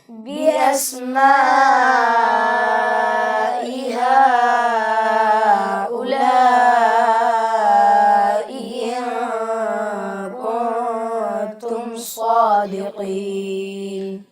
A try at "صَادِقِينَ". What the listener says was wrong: दाल की अदायगी में आप ज़ेर को मारूफ पढ़िए, सादिक़ीन नहीं है, सादिक़ीन।